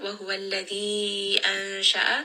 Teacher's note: this is going to be a noon sound that has إخفاء